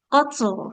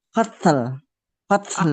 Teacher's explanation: huruf ta-nya harus menghembuskan udara